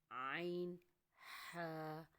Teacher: حلق کے درمیان والے حصے سے عین ہا